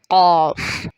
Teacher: اقصی لسان کا وہ حصہ جو حلق کی جانب ہے، جب ہماری زبان اوپر لحات یعنی نرم تالو پر لگتی ہے تو ایک حرف قاف ادا ہوتا ہے۔ زبان کا وہ حصہ جو منہ کی جانب ہے اقصی لسان کہلاتی ہے۔